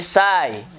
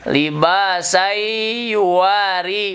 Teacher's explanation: Idgham itu dilebur, asalnya san menjadi sai. Ya, dilebur ke huruf iya.